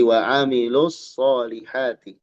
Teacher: Nah di sini wa amilus tidak dibaca panjang lu-nya. Kalau disambung tidak dibaca wa amilus solihati.